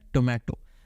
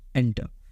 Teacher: normal टी लिखा हो मतलब क्या, ये अनएस्पिरेटेड है